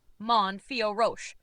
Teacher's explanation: The correct pronunciation of manon fioro in French is approximately manior ro with the emphasis on the last syllable of each name. Man pronounced manon where the n is nasalized typical of French pronunciation.